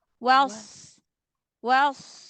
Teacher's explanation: shnya tebalkan angkat pangkal lidah